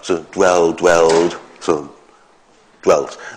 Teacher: It'd be voiced. So this involves devoicing the final L.